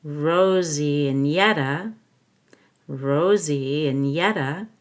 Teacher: and will sound like in and Rosie links to and with a y